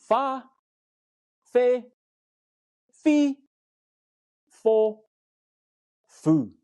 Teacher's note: the WH sound is pronounced like the English F.